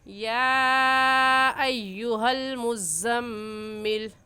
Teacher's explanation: तो ये मीम मुशद्दद है और मीम मुशद्दद पर हमेशा गुन्ना होता है, इस वजह से गुन्ना करके पढ़ेंगे।